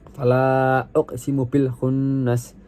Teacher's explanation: fala tersebut dibaca matobi'i karena dibaca panjangnya 2 harokat